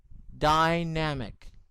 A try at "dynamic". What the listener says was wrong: not dynamic. It sounds like dynamite. It's dynamic.